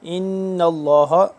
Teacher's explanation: نون کے اوپر تشدید ہے، نون مشدد ہے، تو اس کے اوپر ہم غنہ کریں گے۔ ان اللہ، لفظ اللہ جب آ جائے اور اس کے پہلے لفظ پہ زبر ہو یا پیش ہو تو وہ ہمیشہ پر پڑھا جاتا ہے، یہاں پہ ہم اس کو پر پڑھیں گے۔